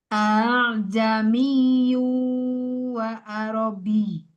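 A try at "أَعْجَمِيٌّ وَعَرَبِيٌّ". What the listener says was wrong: Wa arabi. Bukan bih, tapi bi. Sedangkannya kayak ada haknya ya. Arabi ke ai, ke ya, ai, bi. Jadi jamiu. Kalau ini kayak ada gelombangnya.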